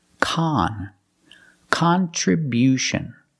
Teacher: changes it's not it's not the short sound it's Khan Khan we use the short ah sound like hot and stop